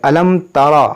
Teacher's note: را موٹا ہوگا کیونکہ را پر زبر ہے · یہاں پر اظہار شفوی ہوگا، یعنی یہاں پر غنہ نہیں ہوگا